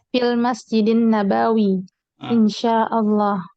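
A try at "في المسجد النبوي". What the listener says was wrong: Ya, yang dikoreksi An-Nabawi. Banyak satu harokat saja. Jadi dia satu ya semuanya. Bukan Nabawi, tapi Nabawi.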